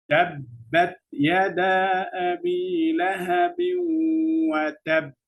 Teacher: if I stop on ba mushaddad here, it will be strong. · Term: Qalqalah